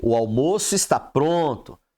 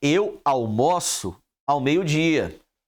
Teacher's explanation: uma pronúncia almoço fechado e a outra pronúncia aberta almoço